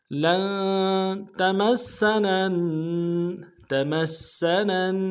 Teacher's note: ملانا ہے، واو مدہ ایک الف میں کھینچیں گے، وقالوا لن، لام کو نون ساکن کے ساتھ ملانا ہے، نون ساکن میں غنہ کریں گے